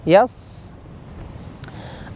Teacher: lebih terasa seperti bersiul ya, ataupun derasan hembusan anginnya itu tertahan oleh gigi depan ini yang atas. Yas. Nah, terasa ini ya kalau kita praktekkan. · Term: huruf shad